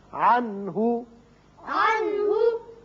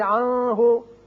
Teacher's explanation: یہاں نون ساکن کے بعد ہا ہے، ہا حروف حلقی میں سے ہے، لہذا یہاں اظہار حلقی ہوگا، نون پر اظہار ہوگا